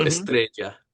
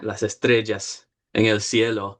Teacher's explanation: Puerto Rican, their double L's become a J